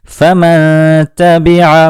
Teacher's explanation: نون ساکن کے بعد تا آیا تو ہم نے نون ساکن کی آواز کو اخفا کیا، یعنی اس کی آواز کو چھپا دیا، اور یہاں ہم نے آواز کو ناک میں لے جا کر گنگنایا، جسے غنہ کرنا کہتے ہیں۔